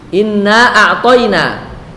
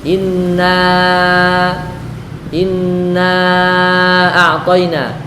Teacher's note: Ketika kita membaca inna dan setelahnya ada hamzah, maka dia menjadi mad far'i.